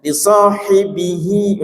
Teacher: bi sama hi, bi-nya pendek, hi-nya panjang